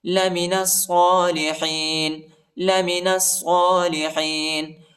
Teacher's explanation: نون کو صاد کے ساتھ ملائیں گے، الف اور لام نہیں پڑھا جاتا، الف اور لام پر حرکت نہیں ہے.